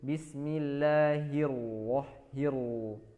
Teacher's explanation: Hinya tipis, ro-nya tebal.